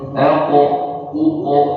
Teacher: Bunyi qalqalahnya tebal. Karena huruf qaf pada dasarnya huruf tebal.